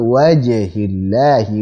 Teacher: huruf jimnya kita berikan sifat syiddah kuat